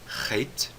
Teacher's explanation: o rit também vem do fundo da garganta · O Re vem do fundo da garganta, aquele som do R em rato, Re, tá certo? O Het também vem do fundo da garganta, só que o som é um som um pouco mais forçado